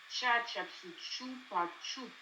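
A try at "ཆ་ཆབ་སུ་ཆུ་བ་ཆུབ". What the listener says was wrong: Cha, chapku, chuba, chup, un petit peu plus expiré. Un petit peu plus expiré, si c'est possible.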